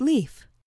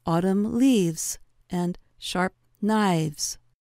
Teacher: with words that end in an F sound such as leaf the voiceless sound f takes on a voiced quality or V and then s sound is added to the word we have